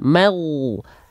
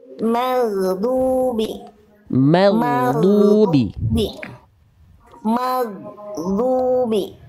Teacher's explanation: Pastikan huruf mimnya tipis, tetap pastikan huruf goinnya tebal. Jangan mimnya terbawa goin. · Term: huruf ghoin